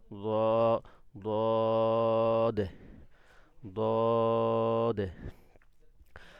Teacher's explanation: জিহ্বার আগাটা দাঁতের, সামনের দাঁতের মাড়ির সাথে লাগবে।